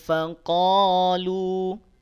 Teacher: Tanda alis nanti akan nampak fungsinya, nampak perannya saat dia wasal. Kalau waqaf di faqalu maka lu-nya 2 harokat saja.